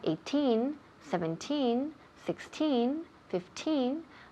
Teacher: when we have 18 17 16 15 the emphasis falls on teen